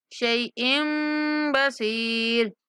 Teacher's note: إِنَّهُ بِكُلِّ شَيْءٍ، شَيْءٍ چھوٹا سا میم لکھا ہوا ہے تو حمزہ کی تنوین کو میم کے ساتھ ملاتے ہوئے غنہ کے ساتھ پڑھیں گے۔